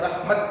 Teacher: تا کو ساکن کر کے پڑھیں گے، ہا نہیں پڑھیں گے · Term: لمبی تا